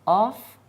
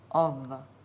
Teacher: like an F with vibration